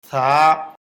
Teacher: জিহ্বার আগা উপরের দাঁতের আগায় লাগবে, জিহ্বা এবং দাঁতের ফাঁকে বাতাস বের হবে, এক আলিফ পরিমাণ লম্বা হবে, পাতলা আওয়াজ হবে।